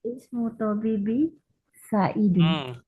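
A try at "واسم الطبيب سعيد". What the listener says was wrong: bukan wa ismu tapi wasmu. Wasmu tabibi. wasmu tabibi Sa'idun.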